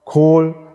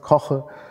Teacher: Dann koche, koche, da haben Sie ein velares K, Kirche, koche, das klingt anders, koche, Kohl, da haben Sie es auch nochmal. Dann haben Sie ein langes O in Kohl und ein kurzes O in koche, was natürlich dann etwas mehr geöffnet ist.